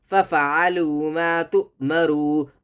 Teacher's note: حمزہ پر جزم ہے تو جھٹکا دے کر پڑھا کریں، جلدی پڑھا کریں